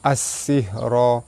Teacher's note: Pada atas bertemu alif mad asli panjang 2 harakat. As-sihra, alif lam bertemu dengan sin, alif lam syamsiah, cara baca dia terus masuk ke sin